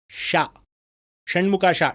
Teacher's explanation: ತಾಲವ್ಯ ಶಕ >> ಯಪ್ಪ >> ಏನೋ ಗೊತ್ತಾಯ್ತಲ್ಲ ಸರ್ >> ಆಯ್ತಾ [ನಗೆ] ದೊಡ್ಡ ಶ ಮೂರ್ಧನ್ಯ ಶಕಾರ ಹೇಳಬೇಕಾದರೆ ನಾಲ್ಗೆ ಫುಲ್ ಹಿಂದಿಂದ ಹೋಗಿ ಬರುತ್ತೆ